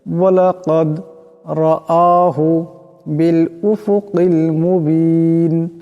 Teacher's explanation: এখানে দাল কলকলা হরফ, আওয়াজটি কলকলা হবে